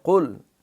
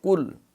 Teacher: یہ قاف کڑاکے کے ساتھ حلق سے نکلے گا